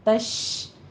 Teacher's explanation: یہ شین کے اوپر تفشی کریں گے، عین کے اوپر ہونٹوں کو گول کیجئے، ضمہ ہے اور عین کی آواز وسط حلق سے نکلے گی۔